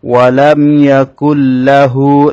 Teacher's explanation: নুনটা লামের মধ্যে প্রবেশ করে যাবে। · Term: ইদগামে বেলাগুন্নাহ